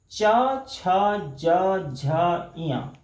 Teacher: और इसी तरह से च, छ, ज, झ, इया आप उच्चारण करके देखेंगे तो हमारे जो दांत है सामने के, उसके ठीक ऊपरी हिस्से और जो मसूड़ा का हिस्सा है शुरुआती, वहां पर होता है जीभ का स्पर्श। ये उस स्थान को कहते हैं तालु, इसलिए इस व्यंजन का नाम है तालव्य व्यंजन।